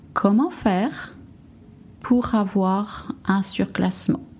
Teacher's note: You also notice that I link pour and avoir